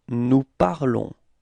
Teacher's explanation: So keep in mind that final S is not pronounced, okay? So it's only this on, the sound on at the end of this verb, okay?